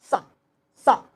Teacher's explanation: ठीक, इसमें क्या होगा भाई, देखो सा, दांत को बैठाइए, सा, सा, इसमें सिरसी जो सिरसिराहट की जो वायु निकल रहा है, सा, ये वाला सा निकलेगा, इसमें दंत से निकलेगा, दंत को बैठाएंगे और झटके से छोड़ेंगे, सा, ये प्योर सा है।